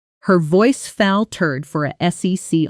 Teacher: In a sentence like her voice faltered for a second, native speakers put heavy stress on faltered and second while the smaller words disappear into quick unstressed syllables